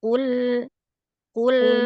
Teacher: Jadi qul pada qulnya ee qofnya diin lagi ya. Qof-nya tebal lam tipis.